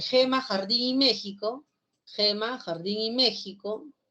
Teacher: el fricativo velar sordo